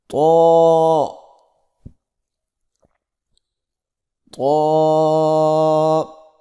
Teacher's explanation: زبان کی نوک کو سامنے والے اوپر کے دو دانتوں کی جڑ سے لگا کر اور زبان کے پچھلے حصے کو تالو کی طرف بلند کرتے ہوئے موٹی آواز میں پڑھیں